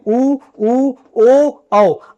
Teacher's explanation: ऐसे स्वर जिनके उच्चारण करते समय हमारा मुख अर्थात हमारे होंठ गोल आकृति में हो जाते हैं · वृत्तमुखी स्वर वो स्वर होते हैं जिनके उच्चारण करने पर हमारे मुख की या होंठ की आकृति गोलाकार हो जाए, उसे वृत्तमुखी कहते हैं।